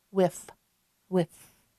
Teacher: When I say whiff, you hear the F, and my bottom lip is behind my teeth.